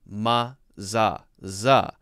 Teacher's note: the TH sound is becoming kind of a Z sound.